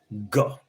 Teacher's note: Then voiced velar plosive. Ga. Voiced velar plosive.